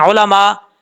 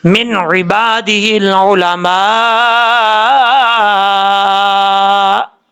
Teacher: حمزہ ساکن جو ہے وہ ہمیشہ جھٹکے کے ساتھ پڑھا جاتا ہے